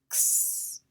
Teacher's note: The letter X has two sounds, x and z. X is a consonant blend, the K and the S together